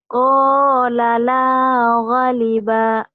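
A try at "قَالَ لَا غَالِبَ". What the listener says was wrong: Gonya panjang. Qala la ghaliba.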